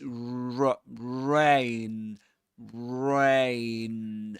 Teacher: we begin the word rain with rounded lips.